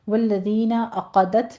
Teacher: عقدت میں عین کو وسط حلق سے ادا کرنا ہے